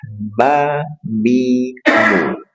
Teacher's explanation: mim dipertemukan dan dirapatkan disertai gunah